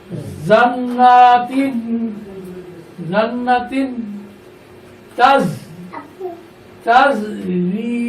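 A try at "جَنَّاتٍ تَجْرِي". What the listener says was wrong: এখানে আসলে গুণাগুলো সঠিকভাবে আদায় করা হয়নি। এখানে দুইটা গুণ আছে, একটু বুঝতে হবে। এক নম্বর গুণা হলো নুনের উপরে তাজিদ আছে।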